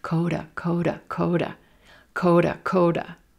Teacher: Do you hear that T is becoming a flap T? Sounds like a quick D.